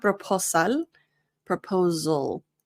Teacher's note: notice that the S in proposal sounds like a Z